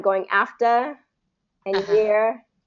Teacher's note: doing a very soft R sound instead of pulling it back